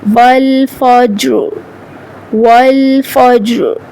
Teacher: ہم را کو پر پڑھیں گے موٹی آواز کے ساتھ